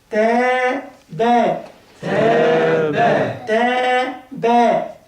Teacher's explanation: التاء من حروف الترقيق، يبقى الألف مرققة